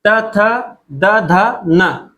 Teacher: इनको बोलते समय हमारी जो जीबा है हमारी जो जीभ है वह टच करती है वह टच करती है किसको दांत को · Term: दंत्य